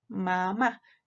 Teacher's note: Y aquí está la otra, la que es mamá, y va a tener un escape, obviamente, por la nariz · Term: oclusivas nasales